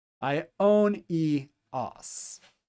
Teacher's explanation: Then our next syllable is omega new own. And then these two vowels are going to be pronounced separately from one another